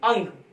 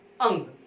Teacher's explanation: इसमें जो है वायु जो है केवल नाक से निकलती है। जैसे अंग, अगर आप अंग बोलेंगे तो इसमें वायु नाक से निकलती है, मुख से नहीं निकलती। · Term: अनुस्वार